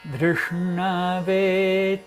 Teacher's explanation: Drishnave, se fosse falar Drishnave, mas o certo é Drishna, Dr. Ponta da língua, então 3 consoantes juntas que a ponta vai permanecer lá paradinha.